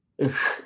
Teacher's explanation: ich is aspirated because there is a sense of air being used, pushing of air, gushing of air